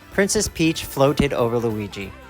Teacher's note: t it gets the ID sound let's practice in this sentence the verb float ends in a t and when a verb ends in a t we use the ID pronunciation